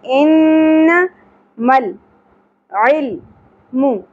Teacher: نون مشدد پہ غنہ ہوگا لیکن زبر کو زیادہ نہیں کھینچیں گے